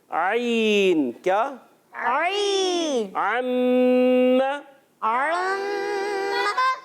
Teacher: عین کی ادائیگی ہوتی ہے حلق کے درمیان والے حصے سے